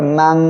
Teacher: নাকের পাশে নিয়ে গোপন করিয়া গুন্না করে পড়বেন